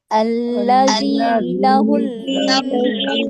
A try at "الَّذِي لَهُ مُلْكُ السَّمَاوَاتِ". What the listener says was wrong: लहुल नहीं है, लहू है, सिंपल। अल्लज़ी लहू मुल्कुस समावाति,